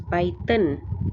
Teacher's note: An additional noon is pronounced but not written at the end of the words. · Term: Tanween